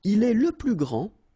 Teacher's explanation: grand, so you don't pronounce the final D, will be exactly the same as the plural form for the masculine, grand.